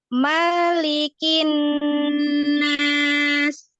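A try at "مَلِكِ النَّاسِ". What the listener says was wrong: Makanya jangan dipanjangkan.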